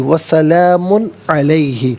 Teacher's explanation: میم پر دو پیش کی تنوین ہے، اس کے بعد عین حرف حلقی ہے تو تنوین کو یہاں پر اظہار کے ساتھ پڑھا جائے گا